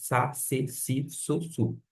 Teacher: Esse S sempre vai ser fraquinho, sibilante.